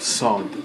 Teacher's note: Sod is a different sounding than seen a little bit. It's a little deeper S sound, sod. But don't worry too much about getting that.